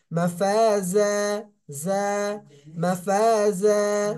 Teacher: জারের উচ্চারণটা হবে জিহ্বার আগাটা সামনের নিচে দুই দাঁতের আগার সঙ্গে স্পর্শ হবে নিচের।